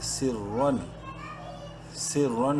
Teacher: را کو منہ بھر کے پڑھنا ہے لیکن اظہار کرنا ہے، ظاہر کر کے پڑھنا ہے